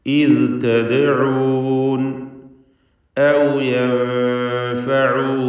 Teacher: ഇഖ്ഫാ ഹഖീഖി നൽകി മറച്ച് മണിക്കുക, നൂനിനെ അവ്യക്തമാക്കി മണിച്ചുകൊണ്ട് ഉച്ചരിക്കുക. യൻഫഊനകും, മണിക്കൽ തർക്കീഖാണ് ഇവിടെയൊക്കെ.